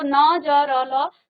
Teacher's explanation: तो न, ज, र, ल, तो ये आपके दांतों के मूल से आपकी जीभ लगती है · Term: दंत मूल